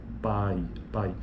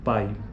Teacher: E é um ditongo decrescente porque, veja, o pico da sílaba já aconteceu, já ocorreu no A. Então, pai, ai, graficamente falando, né?